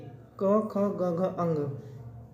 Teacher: इसकी ध्वनि कहां से निकलती है? कंठ से निकलती है। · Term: कंठ ध्वनि